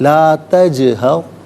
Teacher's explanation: تجہر میں جیم ساکن ہے لیکن جیم حرف قلقلہ ہے، تو آواز لوٹتی ہوئی محسوس ہونی چاہیے۔ لا تجہر نہیں، لا تجہر، لا تج نہیں ہوگا، تج، آواز لوٹتی ہوئی محسوس ہونی چاہیے۔